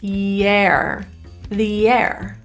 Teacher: The word the is pronounced as an E, not a schwa, because the next word is a vowel. We're going to link it with a Y sound.